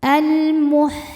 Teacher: alif lam menghadapi huruf qamariyah yaitu mim, maka lam dibaca jelas. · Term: alif lam qamariyah